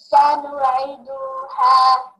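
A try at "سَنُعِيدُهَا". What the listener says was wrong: You forgot to pronounce the yamad. Sanu'iduha. Also, mad ya will ya coming empty, no harakah on it, and preceded by a letter with kasra.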